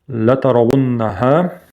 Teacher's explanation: Удвоенное нун. И ха с ударением.